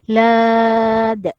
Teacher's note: qalqalah kubra dibaca dengan lantunan sederhana besar